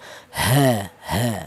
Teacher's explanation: huruf ha ini berasal dari pangkal tenggorokan